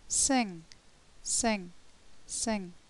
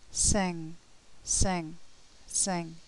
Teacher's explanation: the air flow is obstructed by this back part of the tongue touching the top of the mouth at the back of the mouth and the air escapes through the nose